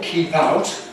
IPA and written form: ˈkiːp ˈaʊt (keep out)